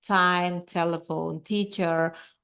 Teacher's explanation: T like time, telephone, teacher, of course, those are aspirated sounds